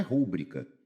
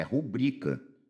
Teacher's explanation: não é rúbrica, é rubrica é paroxítona